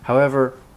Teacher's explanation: there's a slight rise, and that's what the comma reflects.